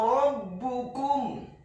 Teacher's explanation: Asa rabbukum, kata rabbukum, huruf ra-nya dibaca tafkhim tebal fathah 1 harokat, huruf ba-nya dibaca tipis ditasydidkan ditekankan dhammah 1 harokat, huruf kaf-nya dibaca tipis dhammah 1 harokat